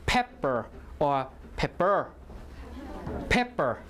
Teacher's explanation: so stress is on the first syllable